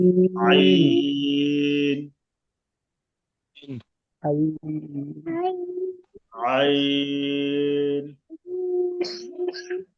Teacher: আইন গলা চেপে ভিতরে নিয়ে পাতলা আওয়াজ